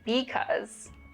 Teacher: Another remarkable feature of Chicano English is that there's less vowel reduction